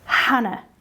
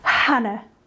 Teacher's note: my favorite words Hannah you put your hand over here Hannah I'm not feeling any vibration until I get to the ah